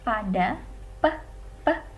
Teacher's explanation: Jadi contohnya bunyi peh, peh, atau pada kata pada, peh, peh, itu merupakan bunyi bilabial yang diucapkan secara meletup.